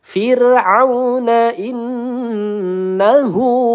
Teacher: ada nun bertasdid ya, ghunah musyaddadah. Kita ayun dua atau tiga harakat